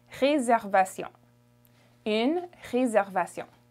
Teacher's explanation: the S makes a Z sound.